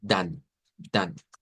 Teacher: Es decir, vamos a tomar la primera consonante, aquí si no cambia, digamos que la W, decimos se cambia por V, pero en este caso la D se mantiene, la A se utiliza la A del español, la A abierta del español y la N